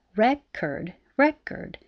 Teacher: the word record has stress on the first syllable if it's a noun